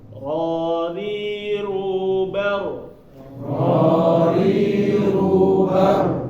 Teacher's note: roh ini sama ketika dia tanwin atau nun mati, dia langsung masuk. Nah, langsung masuk. Jadi tanpa dengung ya